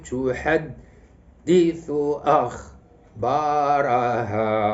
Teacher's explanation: اذا النبر غادي يكون على الدال وعلى الهمزه